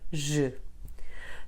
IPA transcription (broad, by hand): ʒ